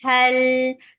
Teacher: There should be a clear misty sound for ha.